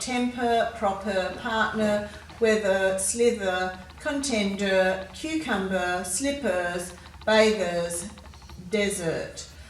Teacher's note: in these words we've got the er ending er it's a bit of a schwa sound